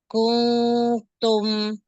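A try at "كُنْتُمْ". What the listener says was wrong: Gue masih engnya dibuang. Kuntum pakai ujung lidah. Maju sedikit lagi, arahkan ujung lidahnya itu ke makhraj ta. Kung masih ada engnya yang tadi yang pertama.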